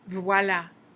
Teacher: ah is the bright bright a sound keeping a smile